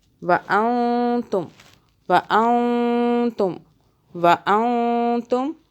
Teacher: یہاں پہ نون کو ہم چھپا کر پڑھیں گے، 2 سیکنڈ کے لیے ہولڈ کریں گے چھپا کر، آگے پھر یہ اخفاء کا قاعدہ ہے نون ساکن کا، نون کو چھپائیں گے، زبان تالو سے ٹچ نہ ہو۔